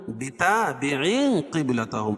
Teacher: بتابع قبلتهم، بتابع قبلتهم، اور یہ تنوین کے بعد حروف اخفا کے 15 حرفوں میں سے قاف ہے، تو یہ ناک میں آواز کو چھپا کر پڑھیں گے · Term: اخفاء حقیقی